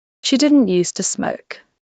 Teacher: In both used to and be used to, the S is voiceless. It is an S sound, not a zed sound. And the word to is weak reduced to awah.